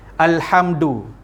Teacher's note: Izhar syafawi, kaedah bacaan dia tanpa dengung. Kenapa? Mim mati bertemu dengan huruf dal dekat depan.